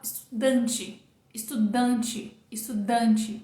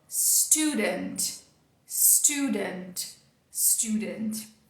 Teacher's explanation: onde está a força? No início. Então, esse pedacinho aqui é que vai ser o mais forte.